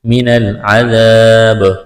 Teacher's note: یہاں جب وقف کریں گے با ساکن کریں گے، با پر قلقلہ کریں گے۔